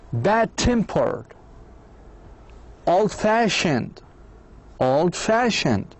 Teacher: for adjectives the stress on the second part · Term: compound adjectives